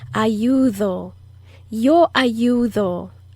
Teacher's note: Yo ayudo. And that D is also the soft D. It's not the hard D as in dog. It's the soft D that blows air out.